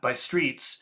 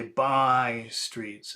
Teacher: you have to say by in a very strong way